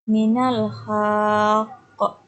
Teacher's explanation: Yang kedua qalqalah kubro, yakni qalqalah yang pantulannya besar karena dimatikan sebab wakaf atau berhenti